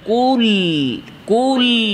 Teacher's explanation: বাইনিয়া বা তাওয়াসসুত মানে আওয়াজ সামান্য জারি। কুল কুল আওয়াজ সামান্য ধরে রাখতে হবে। আর লাম এর আরেকটা সিফত ইনহেরাফ, আওয়াজ দুই সাইড দিয়ে যাবে, সামনাসামনি না।